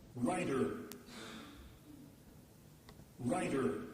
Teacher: writer with a voice T